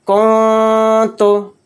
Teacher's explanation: نون کی آواز کو ناک میں چھپا کر اخفا کے ساتھ پڑھیں گے کنتو، کنتو نہیں کہیں گے، یعنی نون کو ظاہر نہیں کرنا